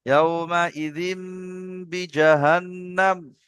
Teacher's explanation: তানমিনের পরে বা এসছে, ছোট্ট মিমের দ্বারা পরিবর্তন করে পড়তে হবে। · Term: ইকলাবের কায়দা